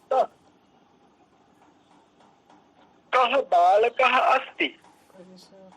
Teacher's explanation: ठीक है, ऐसे ही कह यानी हलंत का, उसके बाद आवर्ण और उसके बाद विसर्ग, तो का में आ मिलकर के पूरा क हो गया और विसर्ग अर्ध हकार की ध्वनि देता है, अर्ध हकार का साउंड देता है